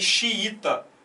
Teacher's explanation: você vê que o segundo i é a tônica